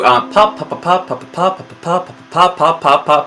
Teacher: Every single pop, you should feel this burst of air.